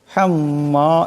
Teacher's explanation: হাম্মা এখানে মিম মুশাদ্দাদের এক আলিফ পরিমাণ গুন্না হবে